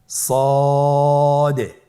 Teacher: সদ হরফটি পুর হরফ। মোটা হরফ উচ্চারণ ক্ষেত্রে মোটা করে পড়তে হবে এবং উচ্চারণ করার সময় তিন আলিফ টেনে পড়তে হবে। · জিহ্বার আগা, সামনের নিচের 2 দাঁতের পেট ও আগার সঙ্গে লাগিয়ে উচ্চারিত হয়। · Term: সদ হরফের মাখরাজ